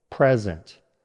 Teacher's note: First, the noun. Stress on the first syllable.